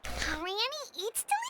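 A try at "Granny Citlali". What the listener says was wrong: But emphasis on Eatsley, not Granny.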